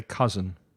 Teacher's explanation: pronounce the second vowel sound with a schwa